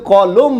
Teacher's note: দুটো অ পাশাপাশি থাকায় পরের অটা যে আছে এর উচ্চারণ কি হবে ও হবে এই অটার উচ্চারণ কি হয়ে গেছে ও হয়ে গেছে দেখেন এবার